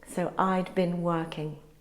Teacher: I had is often contracted to I'd, and been is unstressed and often pronounced as been.